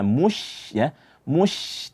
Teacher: menganggap bahwasanya sempurnanya huruf syin itu adalah dengan memoncongkan bibir padahal huruf syin itu tidak ada sedikit pun hubungannya dengan bibir